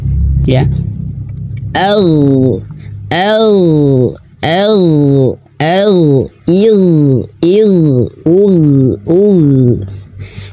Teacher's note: Jadi, huruf Ghain juga memiliki kualitas ketebalan (istila') dan huruf Ghain memiliki kualitas rakhawah, yaitu aliran suara. Jadi ketika itu sukun, suara itu mengalir.